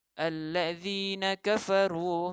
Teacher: Di sini ada satu huruf yang kita tekan atau kita gandakan, iaitu lam yang bertanda syaddah. Kita gandakan bunyinya.